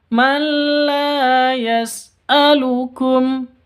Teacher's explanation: Nun mati bertemu dengan lam, masuk ke lam tanpa dengung, idgham bila gunnah.